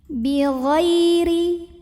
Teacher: ada huruf Lin karena ada ya sukun yang didahului fathah maka dibacanya lembut · sukun yang didahului fathah maka dibacanya lembut Bi Khoiri kemudian roknya dibaca secara tarqiq ya karena barisnya di bawah Jadi ringan aja tipis pangkal Lidah Tidak usah naik